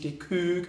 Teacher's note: Da ist die Küche, nämlich die Kök mit einem langen Ö.